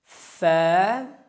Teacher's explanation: ثنایا علیہ کا سرا اور نیچے کے ہونٹوں کا اندرونی حصہ